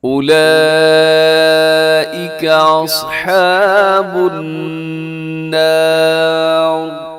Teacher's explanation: النار یہاں پر نون مشدد کی وجہ سے غنہ ہے